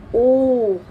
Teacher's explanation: आपकी जो होठों की शेप होगी वो क्या हो जाएगी, गोलाकार बन जाएगी, ठीक है ना, वृत्ताकार बन जाएगी जिसे कहेंगे, ठीक है। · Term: कंठोष्ठ्य